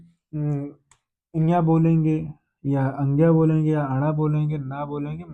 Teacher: अब उच्चारण तो उच्चारण इसका भी नासिका से होता है और इनका भी नासिका से ही होता है। नासिकान अनुस्वारा यानी पंचाक्षर जो है आपके ये भी नासिका से ही बोले जाते हैं